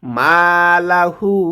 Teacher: মা একালিফ টান হবে, হু একালিফ টান হবে।